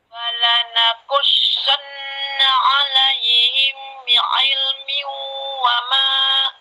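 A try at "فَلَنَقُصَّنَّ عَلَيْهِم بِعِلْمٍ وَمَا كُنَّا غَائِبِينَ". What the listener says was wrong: Him ditahan, himnya ditahan. Ini di sini ditahan, mim mati bertemu ba, ikhfa safawi ditahan ya.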